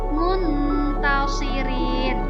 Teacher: tanwin bertemu dengan salah satu huruf Ikfa Hakiki yang 15 maka cara membacanya adalah dengan samar-samar panjang berdengung sebanyak dua harakah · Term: ikhfa